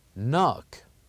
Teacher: the K here is silent and we only pronounced the n